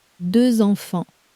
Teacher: The number two ends in one of day one's silent letters, but the word for children starts with a vowel so the sleeper wakes up. A little Z glues the two words together.